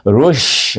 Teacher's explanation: Ra itu, suku kata ra baris depan ru bunyinya, tetapi bila sambung dengan shin, shin adalah bunyi tafashi berhemburan, bunyi nafas kita menghantam gigi kacip kita daripada belakang gigi kacip atas. Rush bunyinya. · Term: huruf shin